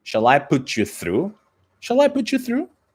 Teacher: we need to link those two words making just one single sound